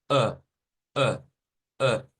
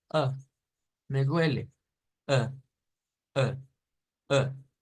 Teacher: es un sonido flojo o sea es un sonido que no tiene fuerza y lo suelo comparar a una persona enferma Pónganse ustedes a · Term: sonido shua